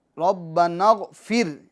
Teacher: ربنا اغفر، فر میں جو را ہے، فر میں جو را ہے وہ باریک کریں گے، اس کو پور نہیں کریں گے